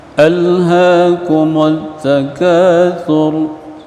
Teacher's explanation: Tha, huruf tha, thur, jangan sur, bukan sin.